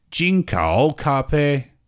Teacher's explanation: If you still remember, actually, when it comes to the first tone, 一声, we have the 5-5, meaning that it's actually the highest tone you can think of, highest voice you can think of